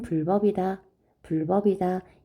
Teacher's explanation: 된 소리가 일어나지 않는게 표준 발음이에요